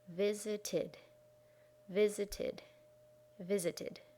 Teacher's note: visit has two syllables in its base form visit so when we make it past we have to add a third syllable in